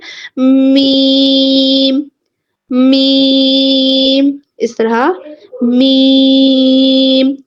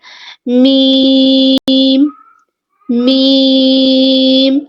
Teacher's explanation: یہ بند ہونٹوں کے خشک حصے سے۔ ٹھیک ہے، جب ہمارے ہونٹ آپس میں ملیں گے یعنی بند ہوں گے، ان کے خشک حصے سے، جو تھوڑا سا باہر والا ایریا ہے، وہاں سے میم ادا ہوگا